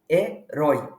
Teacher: estamos diante de um ditongo decrescente. Começa com a vogal forte, seguido da mais fraca.